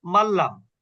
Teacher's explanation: গুন্না হবে না, কিন্তু মিলাতে হবে।